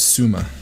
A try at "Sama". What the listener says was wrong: It's 2 A's. There's no U.